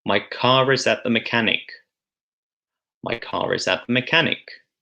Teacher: So we hear a linking R there. You wouldn't normally hear the R when you say car, but in this example, because there's a vowel sound next to it, then we hear it.